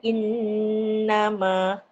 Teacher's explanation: wajibal ghunnah wajib dengunglah dua harakat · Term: wajib ghunah